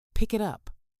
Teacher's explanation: The K sound at the end of pick links directly to the I sound at the start of it. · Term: Linking consonant to vowel